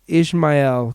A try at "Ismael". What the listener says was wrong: Ismael. There's no H. It's Ismael.